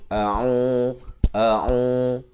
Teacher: Hamzah makhrajnya di pangkal kerongkong. Ain di pertengahan kerongkong.